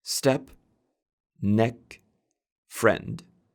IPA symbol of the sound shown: ɛ